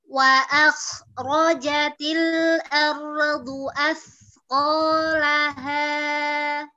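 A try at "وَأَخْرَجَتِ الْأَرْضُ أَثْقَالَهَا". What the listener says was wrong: Lahanya itu yang paling rendah kah seperti itu? Tambah rendah lagi ya. Ulang. Bukan, bukan laha. Laha.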